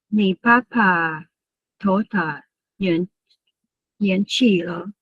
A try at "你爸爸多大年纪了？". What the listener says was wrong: 很好，你爸爸 is not it's not aspirated. 你爸爸多大年纪了哈 ？Don't forget the first one.